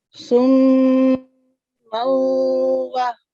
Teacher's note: When we join then after Noon Sakin or Tanween, when 4 letter come Ya, Noon, Waw, and Mim, then we do Idgham. We mudgham them and prolong them 2 seconds and with the light nasal sound.